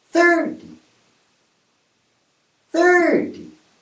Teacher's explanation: The most important thing here is that the stress on the first syllable. It means the first syllable is louder, longer, and a higher pitch, a higher tone than the second syllable.